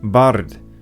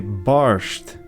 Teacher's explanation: an S sound is sometimes inserted between an R and a D, so instead of saying bard, as you would have in Old Gaelic, they say barsht.